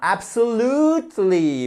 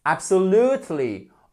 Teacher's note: vous avez une apostrophe qui signifie qu'on a l'accent tonique sur le lut